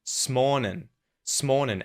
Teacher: he used the syllabic N at the end of the word morning